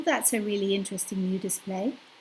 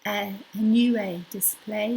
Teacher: problem is that we run our our our sounds into a continuous stream without clear-cut border lines between each word so you can't really tell where the words finish